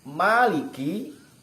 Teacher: ma itu dari bainas syafadain, mim dari antara dua bibir. Terus sifatnya diantaranya adalah istifal, lidah mendatar, ya, dibaca tipis, ma, maliki, jangan meliki, tapi maliki, jangan meliki, tapi maliki.